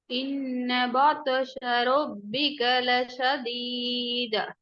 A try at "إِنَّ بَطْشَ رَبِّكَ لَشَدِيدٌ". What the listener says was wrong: பா அல்ல. பா மாத்தக்கூடாது. அது பேதான். நான் பே படிச்சிட்டோம். இப்ப பா மாத்தக்கூடாது. பாத்தூஷான்னு ஓதக்கூடாது.